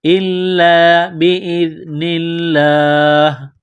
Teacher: باذن اللہ، زال کو پڑھتے وقت زبان تھوڑی سی باہر نکالیں گے، زال کو نرم کریں گے. لفظ اللہ کے نام سے پہلے زیر ہے تو لفظ اللہ کے نام کو باریک کرنا ہے